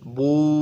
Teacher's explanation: واو سے پہلے پیش، با واو پیش بو، ہونٹوں کو گول کرتے